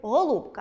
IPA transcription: гоулу́бка